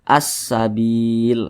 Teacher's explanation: Atau untuk lebih mudah memahaminya, karena di depannya ini ada huruf yang bertasydid, maka a tidak dibaca panjang, langsung dimasukkan ke huruf yang bertasydid ini